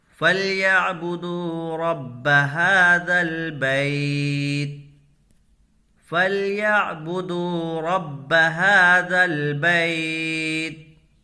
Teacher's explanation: دال کو کھینچ کر کے پڑھیں گے، واو مدہ ہوگا، واو ساکن سے پہلے پیش ہے۔